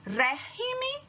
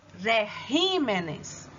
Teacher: Quando você vai passar para o plural, ele vai virar regímenes. E régimen, a sílaba tônica é no ré, e regímenes, a sílaba tônica é no ri.